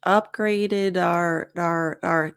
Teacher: the D sound connects to the O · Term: connected speech